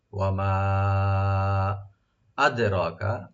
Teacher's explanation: দালে কলকলা হবে এবং রা এখানে ডিপ হবে। মা ওপেন রাখবেন, ১ আলিফ টানবেন।